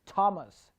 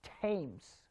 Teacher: when th is used in a noun, let's say for a name, then that sound becomes t sound.